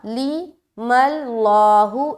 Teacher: ला को मोटा कर रहे हैं क्योंकि मीम के ऊपर ज़बर आ गया